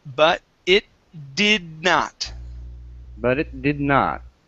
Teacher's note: i'm not going to finish the d sound but it did not so i don't say but it's did